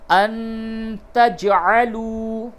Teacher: نون ساکن کے بعد تا ہے، اخفا ہوگا، اور جیم ساکن ہے، اس پہ قلقلہ ہوگا